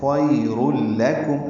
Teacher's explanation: یہ ادغام کامل ہے، را لام سے ملا دیں گے